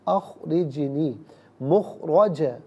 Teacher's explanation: را پر زبر ہے، پر کر کے پڑھیں گے · جیم ساکن ہے لیکن یہ بھی حرف قلقلہ ہے، آواز لوٹتی بھی محسوس ہونی چاہیے